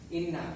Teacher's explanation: cara membacanya dengan dengung serta ditahan sama 2 harokat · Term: bacaan ghunnah